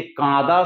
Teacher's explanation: আ ধ্বনিটি অনুনাসিক ধ্বনিতে পরিণত হয়েছে · অনুনাসিক স্বর বলতে চন্দ্রবিন্দু যুক্ত যে সমস্ত স্বর যেগুলো নাকের মধ্যে দিয়ে উচ্চারিত হয়, তাদেরকে বলা হচ্ছে অনুনাসিক স্বর